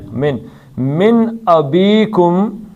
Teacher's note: نون ساکن کے بعد حمزہ آ گیا تو نون کا اظہار ہوگا. من نہیں پڑھا جائے گا بلکہ من.